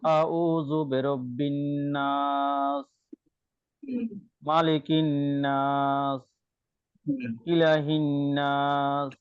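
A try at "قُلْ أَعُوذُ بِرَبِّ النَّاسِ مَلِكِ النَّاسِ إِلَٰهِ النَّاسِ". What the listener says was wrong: টানগুলো যেমন সুন্দরভাবে হচ্ছে না।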